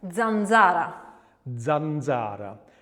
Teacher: So our voiced dental affricate is z